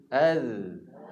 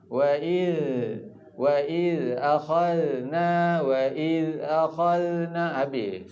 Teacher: huruf zal dia punya nafas kita tertahan. Yang terlepas tu suara. Jadi dia taklah lembik, bahkan sebenarnya dia kena kemas.